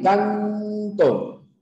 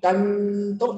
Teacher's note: la n canto tu boca se cierra un poquito canto y la n está chocando con los dientes o sea tu lengua ya no va hac los alveolos sino